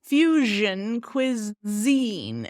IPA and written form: ˈfjuʒən kwɪˈzin (fusion cuisine)